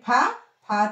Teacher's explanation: మహాప్రాణాక్షరం అనమాట. గాలి వదులుతూ పలుకుతాం.